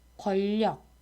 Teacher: 리을에 인접한 니은이 리을로 바뀌는 현상이에요. 그러니까 리을과 니은이 만나면 리을이 비음화 되거나 아니면 니은이 유음화가 된다는 건데 둘 중에서는 니은의 유음화 경향이 좀 더 자주 발생합니다. · 이 경우는 리을이 니은을 만났는데 리을이 바뀌는 게 아니라 앞에 오는 니은이 오히려 리을로 바뀐 거예요